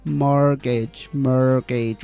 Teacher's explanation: we reduce the a we don't say more gauge